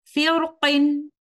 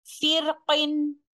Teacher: ہم حرف را کو تفخیم یا ترقیق دونوں میں سے کسی بھی طریقے سے پڑھ سکتے ہیں ، یعنی تفخیم کے ساتھ یہاں پر اپنی تلاوت کو ہم